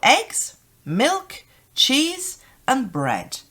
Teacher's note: we come down on the final item so it goes up we also use a rising intonation in